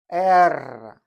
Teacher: R sounds like R in red, but you roll it.